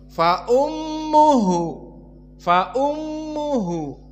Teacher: mim jika ditasdid kan wujubul gunah makhrajnya pindah ke kisum bukan dari alfam bukan dari syafah bukan dari bibir maka berpindah jadi faum hidung faum fa ummuhu fa ummuhu kemudian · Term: wujubul gunnah